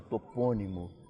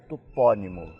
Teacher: nós outros no Brasil pronunciamos com a sílaba fechada, topônimo, e os portugueses com a sílaba tônica aberta, topônimo. Então, o que aconteceu?